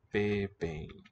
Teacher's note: the M is not really a M. It's a weakly, it's an incompletely sealed nasal